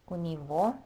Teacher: that g is always pronounced as v at the end of words